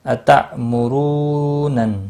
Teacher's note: حمزہ ساکن کو تھوڑا جھٹکے کے ساتھ پڑھیں گے۔ مرو، را پیش کی وجہ سے پر پڑھا جائے گا، رو واو مدہ بھی ہے، ایک الف کے برابر کھینچ کر پڑھیں گے۔